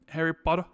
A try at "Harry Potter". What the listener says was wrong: No, you don't say the her. You say Harry.